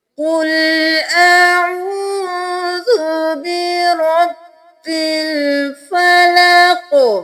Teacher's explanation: قاف کو موٹا پڑھنا ہے، حمزہ اور عین میں فرق کرنا ہے، واو مدہ ہے، ذا کو نرمی سے ادا کرنا ہے، را کو موٹا